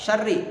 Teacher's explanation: Nah, ra-nya dibaca takrir dan tipis. Karena ra-nya kasrah. Takrir itu getaran.